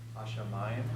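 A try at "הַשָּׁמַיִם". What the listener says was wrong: Okay, remember the pathak? Hash, shamayim. And notice the doubling dogish in the sheen. Hash, shamayim. Hash, shamayim. Modern Hebrew says hashamayim. All right, we're pronouncing it as biblical Hebrew.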